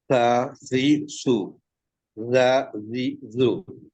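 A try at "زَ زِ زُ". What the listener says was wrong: যা একটু পাতলা হবে, যা, জি, জু।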